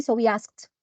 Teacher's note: the ed at the end here after the ka sound, it's voiceless, so we pronounce it as ta